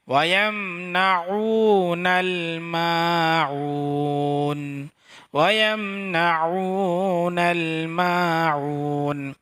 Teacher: عین یہاں پہ عین ادا کریں گے، بیچ حلق سے بولیں گے. وَيَمْنَعُونَ الْمَاعُونَ، وَيَمْنَعُونَ الْمَاعُونَ، معون میں بھی عین ہے تو عین ہی بولیں گے.